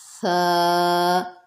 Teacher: ثا، نرمی سے پڑھیں گے، سیٹی سے بالکل نہیں پڑھیں گے، نرم حرف ہے